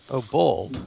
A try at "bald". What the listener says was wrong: Bald. There's no W in bald.